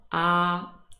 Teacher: your mouth is much more open when you say ah and your tongue is out of the way it's low